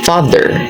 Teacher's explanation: father is a low back vowel